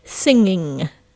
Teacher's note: nice throat, subtle sound, we don't want to hear the G